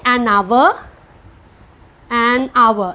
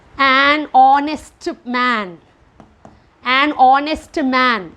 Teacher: So here H is silent. Though H is a consonant, the letter H is silent.